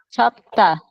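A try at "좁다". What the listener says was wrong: Chom, con M.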